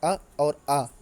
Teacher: है छोटा आ और बड़ा आ इन्हें आप बोल के देखिए अ और आ तो ये हमारे कंठ से बोले जाते हैं